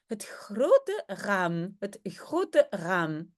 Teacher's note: un r gutural hein ici derrière dans la gorge un peu comme en français mais plus doux donc vraiment tout tout léger donc par exemple on dirait RAM